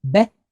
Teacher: So we have the letter bait, and it's pointed with vocal shva because we're at the beginning of a word. So we have a B sound and a quick E.